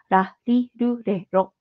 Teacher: yung sa Japanese po yung pagitan lang ng L and r sound so ra ri Ru re ro hindi siya ra na matigas